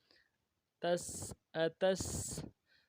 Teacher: تا کو سین کے ساتھ ملانا ہے، سین کی سیٹی باریک ہوگی